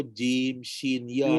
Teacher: jim, shin, ya ni adalah huruf yang datang di tengah lidah.